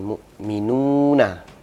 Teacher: wau yang diharakati sukun namun sebelumnya ada ada huruf yang berharakat damah yang panjangnya Hanya dua harakat tidak boleh lebih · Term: Mad asli, mad tabi'i